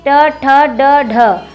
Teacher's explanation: और ट वर्ग का उच्चारण स्थान होता है मूर्धा।